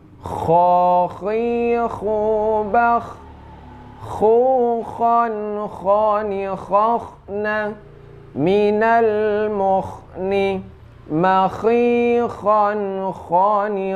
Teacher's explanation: Nah, dia itu agak getar ya. Ini tenggorokan paling atas. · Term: huruf kha